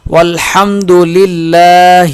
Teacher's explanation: دونوں لام یہ باریک پڑھے جائیں گے، لام ایک الف کے برابر کھینچ کے پڑھا جائے گا۔